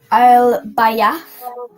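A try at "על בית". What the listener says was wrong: Absolutely perfect. Well done.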